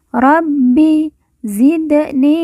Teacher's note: Bi yang bertasjid maka ditekan dan ditahan dua harakat